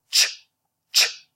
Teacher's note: When you combine t with sh, you get ch, ch. It's a single sound, a single phoneme.